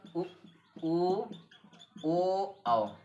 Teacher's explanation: वे स्वर जिनका उच्चारण करते समय ओठ गोल हो जाते हैं, अर्थात वृत्त जैसी आकृति बनती है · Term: वृत्तमुखी